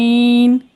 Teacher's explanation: ऐन बिल्कुल हलक से निकालना है।